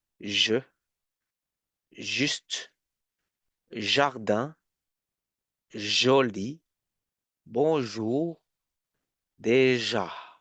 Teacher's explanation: It's a SH sound, shh, but voiced. So I put the tip here.